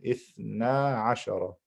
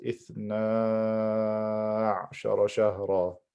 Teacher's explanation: But in Abu Ja'far's recitation, he puts a sukoon on top of the ayn. So I have sukoon before it is a letter of med. I have to stretch the letter of med for 6 harakat.